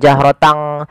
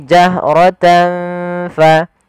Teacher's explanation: ada bacaan ikhfa pada lafal tan bertemu dengan huruf fa, yaitu suara tannya disamarkan kepada huruf fa.